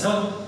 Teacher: आता झ म्हटल्यानंतर निश्चित बघा निश्चितच त्यामध्ये फुफ्फुसातील हवा मोठ्या प्रमाणात बाहेर पडल्यासारखी वाटेल.